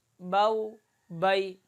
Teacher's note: حروف لین کو آدھے الف کی مقدار کھینچ کر پڑھیں گے۔ حروف مدہ میں آپ نے پڑھا تھا کہ 1 الف کی مقدار کھینچ کر پڑھتے ہیں، تو حروف لین میں آدھے الف کی مقدار اس کو کھینچ کر نرمی کے ساتھ ادا کریں گے۔